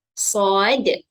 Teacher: Dan huruf dal merupakan huruf yang terakhir. Sifat huruf dal ketika mati adalah lantun ataupun qalqalah. Jadi kita kena lantunkan pada akhir bacaan nanti.